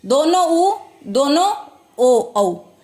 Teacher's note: होठों की आकृति जो है गोल हो जाए तो व्रतमुखी